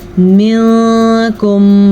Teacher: जब कभी नून साकिन के बाद हरूफ इख्फ़ा में से कोई हर्फ आ जाए तो नून साकिन को हम छुपे हुए गुन्ने के साथ पढ़ते हैं। · रॉ को पुर पढ़ेंगे क्योंकि रॉ पे पेश है और ये वाव मद्दा है।